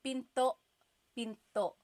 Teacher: Do you hear the glottal stop when I say pinto?